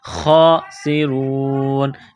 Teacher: سین میں سیٹی کی آواز پیدا کرنی ہے